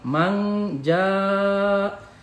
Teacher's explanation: ini mad wajib mutasil dibaca 5 harokat